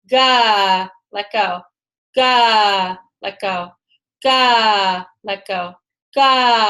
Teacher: we just use the back of our tongue and our soft palate as gently as possible, and we send sound and energy up and through that.